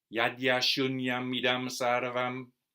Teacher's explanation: the stress is not on the a of ashunyam.